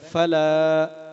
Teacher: فلا میں لام کو لمبا کریں گے اس لیے کہ زبر کے بعد الف آ رہا ہے